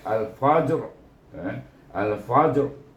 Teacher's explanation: Jadi tebal ra bunyinya, tapi ra tu tidaklah bunyi sepenuhnya